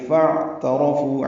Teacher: فا لمبا نہیں کرنا، فا کو عین سے ملانا ہے، یعنی فا اور اعترفو ہے، ملا دیں گے.